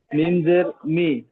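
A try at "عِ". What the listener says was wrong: মিম নয় ওটা, দেখেন আইন ইয়াজের ই।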